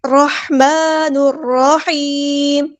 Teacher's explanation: را میں تقریر کی صرف شو ہوگی، ایسے ہلکی سی وائبریشن آپ کی زبان میں فیل ہونی چاہیے · لام یہاں پہ لام شمس ہے، اس کو ہم ظاہر نہیں کرنا